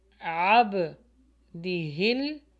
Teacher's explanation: ہے اور ہا کے نیچے بھی زیر ہے، عب دی ہل، ہا جو ہے لام سے ملے گا